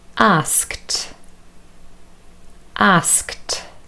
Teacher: here you have s, k, t, three consonants next to one another